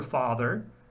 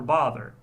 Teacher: There's a vowel for father, and there's a vowel for bother, which I have completely collapsed. There's no distinction between those two vowels for me.